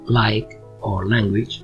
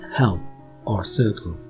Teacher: a light sound as in like or language and the dark sound as in help or circle